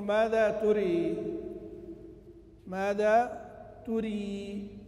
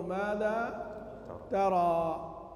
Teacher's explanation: وليست بإمالة وإنما تاء مضمومة وراء مكسورة كسرا محضا